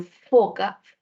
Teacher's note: Labios y dientes, como en foca, labio dental.